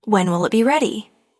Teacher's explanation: When will it became when'll it